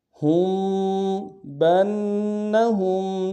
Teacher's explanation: با کو آگے نون کے ساتھ ملانا ہے، نون کے اوپر تشدید زور دیں گے۔ ہا کو میم ساکن کے ساتھ ملانا ہے، میم ساکن میں یہاں پہ اخفا ہوگا۔